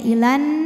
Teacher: Tapi kalau terus pemanjangnya gugur, la-nya dibaca pendek langsung masuk ke nun ya, ilan, namanya takhallus bil hadfi.